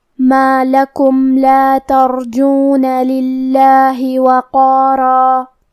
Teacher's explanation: لام حروف الاظہار الشفوی میں سے ہے، تو ہم حرف المیم کو ظاہر کریں گے اور بغیر غنہ سے یہ حکم کو ادا کریں گے · کلمت ترجون یہاں حرف الراء پہ جزم ہے. یہاں را کا حکم ہے تفخیم کیونکہ اس پہ جزم ہے